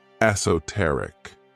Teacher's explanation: This word has 4 syllables, and the stress is on that third syllable.